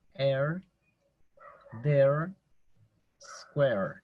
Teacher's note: Aquí tenemos un sonido más alargado que la E española. Sin embargo, se escribe de esta manera, como en air, there, square.